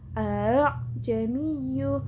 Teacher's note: A-nya yang pertama dibaca jelas, yang kedua dibaca tashil. A'jamiyyu. Atau ada juga yang baca h-nya agak jelas.